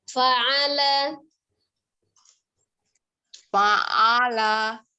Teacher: Fa'ala gitu. Ainnya tidak di hidung, kemudian tidak dipanjangkan, tidak juga ke dada. Dari tenggorokan bagian tengah ya.